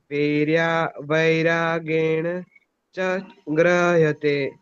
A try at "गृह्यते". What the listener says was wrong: ये ग्रह्यते नहीं है, गृह्यते है, गृह्यते।